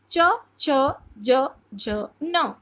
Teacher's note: च वर्ग के जितने भी व्यंजन होंगे वो तालु से बोले जाते हैं।